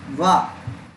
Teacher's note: दंत प्लस ओष्ठ यानी दांत प्लस ओष्ठ, माने दांत और होठों से, दांत और होठों की सहायता से मिलाकर क्या बोला जाता है? वा। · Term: दंतोष्ट